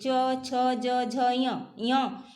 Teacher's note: च छ ज झ य का उच्चारण स्थान च छ ज झ सबका तालु है। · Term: तालव्य वर्ण